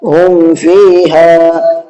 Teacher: میم کی آواز کو ظاہر کر کے پڑھا ہے، غنہ نہیں کیا۔ تو اس کو کہتے ہیں ظاہر کرنا۔ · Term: اظہار